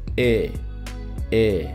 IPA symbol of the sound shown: ɪ